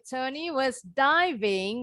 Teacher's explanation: pakai V ya, pita suaranya bergetar